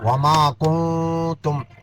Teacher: یہاں نون ساکن کے بعد تا ہے اخفا ہوگا